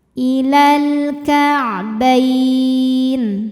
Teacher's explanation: Karena alif lam menghadapi huruf qamariyah, yaitu kaf. Maka lam sukun kita bunyikan dengan jelas. Atau disebut dengan izhar qamari.